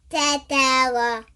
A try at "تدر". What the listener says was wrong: You're saying tata. This is not tata.